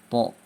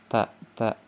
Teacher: Sehingga secara bacaan atau secara pengucapan huruf to lebih tebal karena sifatnya yang isti'ala, terangkatnya lidah ke langit-langit mulut. To, ya.